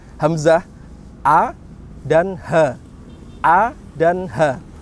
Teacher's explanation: Dari pangkal ini, dari tenggorokan bagian dalam ini itu keluar 2 huruf, yaitu huruf hamzah dan huruf ha. Ha besar ya, hamzah, a dan ha.